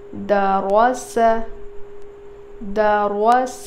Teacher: रो सिर्फ हैवी होगा, मोटा पढ़ेंगे, दाल और सीन बारीक पढ़ेंगे और बिल्कुल नहीं खींचेंगे